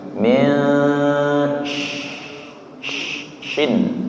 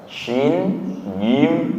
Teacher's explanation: Min suaranya samar min syin. Syin tengah lidah nggih. Bukan ujung lidah. Bukan min tapi jadi tengah lidahnya naik ke langit-langit nggih.